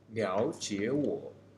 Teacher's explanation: in the first 2 words, the 3 tone is more likely to be transferred to tone 2. This is because the inconvenience of pronunciation of 2 continuous 3 tone, so that the first 2 words are transferred into tone 2.